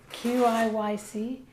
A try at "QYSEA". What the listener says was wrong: QYSEA. QYSEA? No, there's no K in there. QIY. QYSEA.